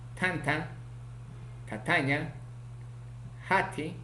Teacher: consonante ta, oclusivo, aspirado, alveolar, sordo, ocurre en posición inicial, medial, final